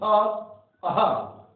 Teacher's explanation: मुख खुला और वायु झटके से बाहर निकलती है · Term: काकल्य वर्ण